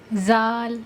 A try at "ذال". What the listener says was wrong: نہیں زال نہیں، زال کہہ دیا تو یہ بن جائے گا نا. کہو ذال.